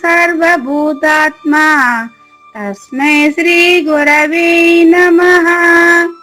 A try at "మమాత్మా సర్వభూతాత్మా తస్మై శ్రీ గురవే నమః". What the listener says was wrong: Very good.